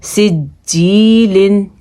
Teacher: جیم پہ تھوڑا قلقلہ ہوگا کیونکہ جیم حروف قلقلہ میں موجود ہے